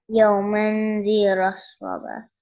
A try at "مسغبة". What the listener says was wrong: No, ميم. مسغبة, not را, ميم.